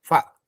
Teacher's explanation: huruf fa itu kan gigi atas menyentuh bibir bawah yang basah.